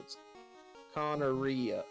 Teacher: It's two trochaic feet. The first syllable is stressed, and the third syllable is stressed.